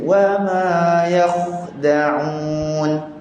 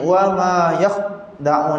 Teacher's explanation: huruf kha huruf ada angin, betul? Tapi kita nak angin kha ni, kita tak nak bunyi putus.